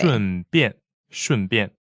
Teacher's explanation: Fourth tone and fourth tone.